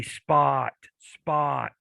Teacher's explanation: if you say spot the p spot spot it really isn't aspirated that much if you feel the air coming out of your mouth now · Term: not aspirated